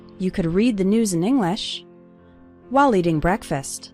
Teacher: the stressed syllables are read, news, and the first syllable of English, in